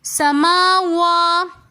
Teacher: سما کے اندر کھڑا میم کے اوپر کھڑا زبر ہے تو اس لیے ہم سما تھوڑا سا کھینچ کر پڑھیں گے. وا کو بھی ہم ایک الف کی مقدار کھینچ کر پڑھیں گے.